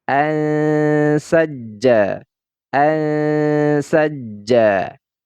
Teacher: suaranya itu suara n nya ya dia ditahan Ma tahan anaj anajja kalau kita belajar mengenai tingkatan guna nah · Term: ikhfa Hakiki